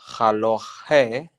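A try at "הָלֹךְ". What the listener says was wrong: So let me make sure we're together on this chaf. When there are two dots in there, you don't pronounce any vowel. You just end with the haloch. You just finish with the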